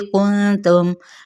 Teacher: नून पे इफ़ाई हकीकी, मीम पे इज़हार शफवी